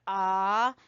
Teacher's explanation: آواز اس کی آ ہی آئے گی، اوپر کو ہی اٹھے گی. ٹھیک ہے، اور اس کو ایک الف کے برابر اس کو لمبا کرتے ہیں، کھینچتے ہیں. یہ حرف مدہ کے برابر کھینچا جاتا ہے، الف مدہ کے برابر. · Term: کھڑی زبر